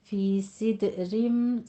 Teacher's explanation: فی صدرم، صد میں سیٹی کی آواز بھی آنی چاہیے اور کسرہ کی آواز باریک بھی ہونی چاہیے، اور دال کے اوپر قلقلہ کریں گے